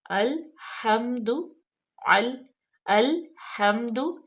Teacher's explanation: الحمد، حمد، ہا جو ہے اس پہ زبر ہے اور میم ساکن ہے، اور اس کو ہم اس پہ غنہ بالکل نہیں پیدا کریں گے